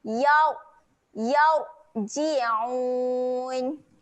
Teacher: huruf ra di sini keadaannya tebal jadi kita kena muncungkan sedikit mulut.